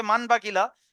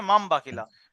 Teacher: তানবিন আর নুন সাকিন আওয়াজকে এখানে হবে না, এখানে হবে তানবিন এবং নুন সাকিন কে মিমের দ্বারা পরিবর্তন করে একালি গুণনা করে পড়তে হবে। যেমন লেখা থাকবে মান বাকিলা, কিন্তু পড়তে হবে মাম বাকিলা। · যেমন লেখা থাকবে মান বাকিলা, কিন্তু পড়তে হবে মাম বাকিলা। নুনটা মিমের দ্বারা পরিবর্তন হয়ে যাবে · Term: ইকলাব